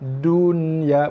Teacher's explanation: Nun ada baris mati tak dengung, jelaskan bunyi nun mati. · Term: izhar mutlak